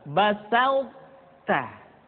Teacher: dimiliki oleh huruf th masih tetap ada sehingga ketika mengucapkan e th bertemu dengan ta terdengar suara yang menebal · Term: idgham